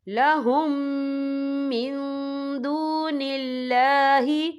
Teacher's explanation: یہ دیکھیں لہم، یہاں میم ساکن ہے، میم ساکن کے بعد جو ہے میم مشد والا حرف آ رہا ہے، تو یہاں پر ادغام شفوی ہوگا. ہم پچھلے میم کو اگلے میم میں مدغم کریں گے، اور ہم یہاں غنہ بھی کریں گے